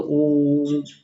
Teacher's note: जैसे अब देखते हैं एक ओम शब्द का उच्चारण करते हैं, ओम, तो इस तरह हमको लिखना है तो ओम, ऐसा जब बोलते ओ जो लंबा खिंचाया जाता है वो स्वर जो होता है हम उसको बोलते हैं प्लुत स्वर